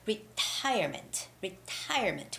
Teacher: it's retirement retirement with the second syllable stress